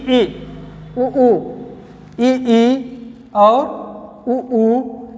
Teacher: ऐसे स्वर जिसको बोलने पर मुख पूर्णतः बंद रहता है